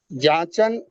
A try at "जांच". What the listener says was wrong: नहीं नहीं, जांचन मत कीजिए आप, नहीं जांचन नहीं है। हमने क्या, आपने क्या पढ़ा था, नून अगर बीच में आए तो नूनगुन्ना का साउंड देता है, जैसे कि आंगन लिखते हैं। जांच, हाँ नंबर, ठीक।